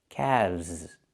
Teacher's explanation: Not calves, but calves. The L is silent and we pronounce the V sound with vibration plus the Z sound like zebra together.